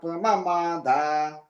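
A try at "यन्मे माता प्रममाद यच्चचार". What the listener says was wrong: దీర్ఘం లేదండి ప్రమమాత అంటున్నారు దీర్ఘం లేదు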